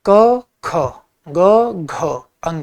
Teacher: क में कम हवा लगेगी, ख में ज्यादा, ग में कम, घ में ज्यादा, अंग में कम। यानी पहले में कम, दूसरे में ज्यादा, तीसरे में कम, चौथे में ज्यादा, पांचवें में कम। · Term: महाप्राण